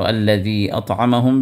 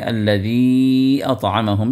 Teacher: الذی اطعمہم میں جو مد ہے وہ مد منفصل ہے جو آپ کھینچ بھی سکتے ہیں اور نہ کھینچنے کی بھی اس میں اجازت ہے